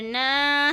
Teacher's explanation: دو انگلیاں کھلے گی، ایک تو نون مشدد کی اور ساتھ میں الف مدہ کے